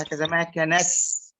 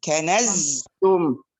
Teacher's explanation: فلولا الجهر في الزاي لصارت سينا، ولولا الهمس في السين لصارت زاي.